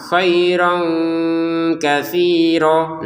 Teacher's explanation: Utiyanya langsung ke kha karena memang tidak ada tanda panjang, tidak ada alif di sini. Untuk kata khairan bertemu kah baca dengan samar.